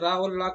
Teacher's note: दंत मूल से रा और ला का उच्चारण होता है।